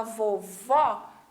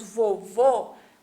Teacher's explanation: quando a gente fala vovó, a gente põe o ar para fora. E quando nós falamos vovô, o ar, a gente deixa ele na nossa boca ainda. Então, essa é uma das diferenças quando nós vamos pronunciar uma palavra com acento agudo e uma palavra com acento circunflexo.